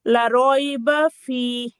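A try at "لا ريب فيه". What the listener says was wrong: লা রাইবা, লা টান হবে। এখানে ওয়াকফ করলে তো টান হবে, ওয়াকফ করলে তিন আলিফ টান হবে, মাদ্দা আরজি। লা রাইবা ফি, তিন আলিফ টান।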